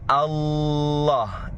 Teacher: ujung lidahnya berjumpa dengan gusi bagian atas gusi seri bagian atas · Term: taglidul lam